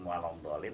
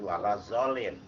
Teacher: Dia padahal mampu tapi diganti makhraj huruf yang semestinya dhad diganti dengan dha